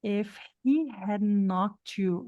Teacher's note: a gente vai juntar eh esse t para lá no e quando a gente junta o t com y gente a gente escuta o chiado